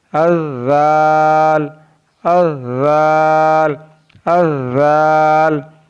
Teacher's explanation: ज़ाल ज़बान का सिरा और ऊपर के दांतों के अंदरूनी किनारे से अदा होता है।